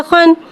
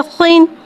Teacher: खा हुर्फ़ मुस्तआलिया है, लिहाजा इसकी आवाज़ हलक से मोटी अदा होगी।